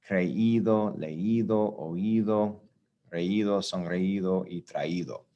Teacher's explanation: We did that when we went back to your right here, IR verbs and ER verbs, you add IDO at the end. Well, we're still adding IDO, but the I is stressed, it's accented. So we need to put an accent mark over the I with this conjugation, with this verb structure in order to preserve that sound.